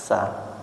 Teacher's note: sa niku ujung lidah mendekati gigi seri bawah. Dari segi tempat keluarnya seperti itu.